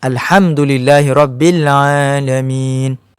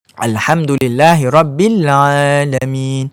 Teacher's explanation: Jadi tekanan pada huruf Ain itu tidak terlalu berat, tidak terlalu berat. Mesti dalam kadar yang sederhana sahaja.